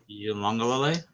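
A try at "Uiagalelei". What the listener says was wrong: because there's no N in his name.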